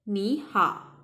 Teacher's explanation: The second case is when third tone followed by another third tone. The first third tone, it changes into the second tone.